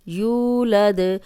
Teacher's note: یو کو لمبا کریں گے کیونکہ واو مدہ ہے، جزم والی واو پیچھے پیش 2 حرکات لمبا ہوگا۔